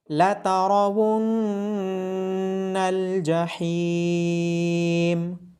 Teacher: نون مشدد ہونے کی وجہ سے نون پہ غنہ کیا جائے گا۔